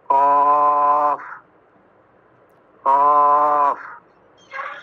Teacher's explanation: একবার গোড়া হইতে একটু আগে বাড়াইয়া তার বরাবর উপরে তালুর সঙ্গে লাগাইয়া উচ্চারিত হয় · খ গইন খ গইন খ গইন খ গইন চার নম্বর মাখরাজ জিহ্বার গোড়া তার বরাবর উপরে তালুর সঙ্গে লাগাইয়া উচ্চারিত হয় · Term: পাঁচ নম্বর মাখরা